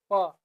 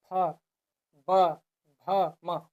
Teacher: पवर्ग, जिसका उच्चारण में ओठ का प्रयोग होता है, यानी कि बिना ओठ को हिलाए ये पवर्ग को आप नहीं उच्चारण कर सकते हैं।